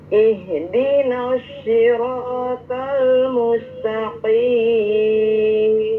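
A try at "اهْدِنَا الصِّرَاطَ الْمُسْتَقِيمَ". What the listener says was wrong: Ya, huruf so-nya jangan mirip dengan sya. Ya, bukan ihdinas syi, tapi ihdinas si. Ihdinas si.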